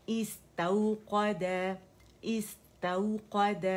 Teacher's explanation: تا کے لیے کیونکہ فتح ہے آواز ایک کاؤنٹ کے لیے اوپر جائے گی ٹھیک ہے پھر نرمی سے واؤ سے ملائیں گے استوقد استوقد